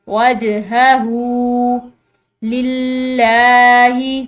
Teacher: ہاں پر الٹی پیش ہے جس کی وجہ سے ہم اس کو ایک الف کی مقدار لمبا کھینچ کر پڑھیں گے